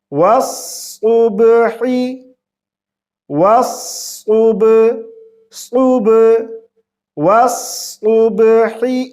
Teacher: با پہ ہم قلقلہ کریں گے اور صاد کو موٹی آواز سے پڑھیں گے